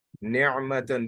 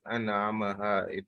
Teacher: alif is from the bottom part and ain is from the middle part · pronouncing the ain as it's supposed to be from the middle part of the throat